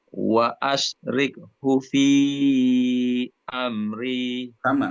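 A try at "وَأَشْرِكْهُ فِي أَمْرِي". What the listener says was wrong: Istiqomah dengan shin. Wa asyrikhu.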